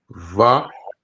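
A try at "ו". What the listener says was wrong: So this would be like a W sound, like wa.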